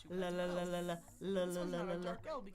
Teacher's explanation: This one's not a dark L because it's not at the end of the syllable, but it's at the beginning, so we call it a regular L. It's the one that's on the bump.